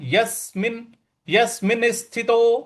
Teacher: यहां पे यस पे हमको बल लगाना है यस्मिन यसिनस्थितो और मिन यहां पे भी हमको हल्का सा बल